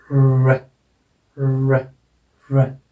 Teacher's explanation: जीभ ऊपर जाती है, लेकिन रिज की तरफ नहीं, थोड़ा हार्ड पैलेट की तरफ जाती है जीभ, जीभ का आगे का हिस्सा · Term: पोस्ट एल वी एल